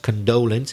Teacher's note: the pronunciation of condolence it's the second syllable which is stressed